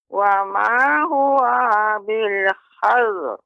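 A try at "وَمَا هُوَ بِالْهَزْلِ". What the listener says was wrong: Huwanya, ya uwanya tidak boleh panjang, Nek. Wa ma huwa bil hazl.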